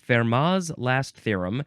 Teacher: I'm guessing that the t is silent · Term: No T sound